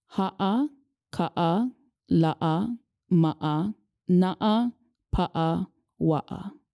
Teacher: The okina, which is part of the pi'apa, is a glottal stop. So there's a literal stop in your speech when you pronounce it.